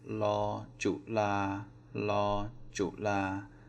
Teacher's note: So la, low tone, and flat tone